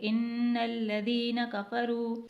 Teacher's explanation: یہاں پر زال کو نرمی سے ادا کرنا ہے، یعنی زال میں سیٹی نہیں آنی چاہیے